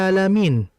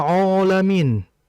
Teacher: Di situ ada huruf ain, harokatnya fathah, kemudian setelahnya ada alif. Maka alifnya harus mengikuti sifat sebelumnya, huruf sebelumnya itu ain. Dan ain ini sifatnya tipis. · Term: alifnya menjadi tipis